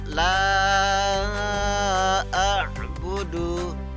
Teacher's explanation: La a'budu, lam alif ini ya, ada alifnya. La a'budu, alif bertemu dengan hamzah, maka dibaca panjang 5 ketukan atau 5 harokat ya